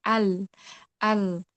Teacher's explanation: Tempat keluarnya ada di tepi lidah depan. Kita bisa merasakan huruf ini ketika disukunkan al. · Sifat bacaannya suaranya jelas, sedang, tipis, mulutnya terbuka ketika mengucap huruf lam ringan dan miring. Miring ini maksudnya udara yang keluar bisa keluar dari sisi kanan dan sisi kiri.